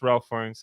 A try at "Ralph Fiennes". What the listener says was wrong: pronounced Ray Fiennes. I know it says Ralph, but it's Ray though. But I think everyone refers to him as Ray Fiennes.